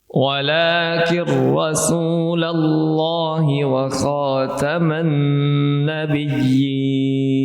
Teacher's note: di sini huruf r dibaca tebal karena fathah